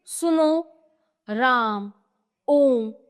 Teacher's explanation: प्लुत स्वर। इस स्वर के उच्चारण में दीर्घ स्वर से भी अधिक समय यानी तीन मात्राओं का समय लगता।